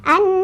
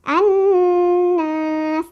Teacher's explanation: Nun bertasydid dibacanya digunahkan atau didengungkan dengungannya ditahan 2 3 atau empat